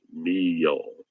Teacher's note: So that's MEAL and it's pronounced meal. So there's actually two syllables there together, me and then yo, meal, and they go together, meal, meal.